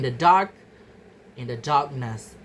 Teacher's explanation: The stress remains on the first syllable. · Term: stress-preserving suffixes